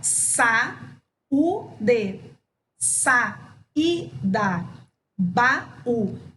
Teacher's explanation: Reparem que o som das duas tem a mesma intensidade. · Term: hiato